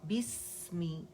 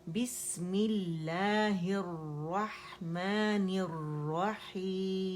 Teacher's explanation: کسرہ proper ادا کریں گے، مجہول نہیں ہونی چاہیے، معروف ہونی چاہیے